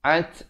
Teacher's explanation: ada bunyi hamasnya, ta-nya bertanda mati di situ